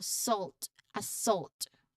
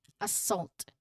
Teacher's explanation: The main part of the word, which is also the stressed and louder, is the second syllable salt.